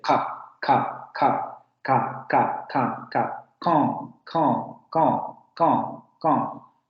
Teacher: Y si notan, no hay aspiración ahí. Es un fonema oclusivo, por eso se escucha esa salida abrupta de aire.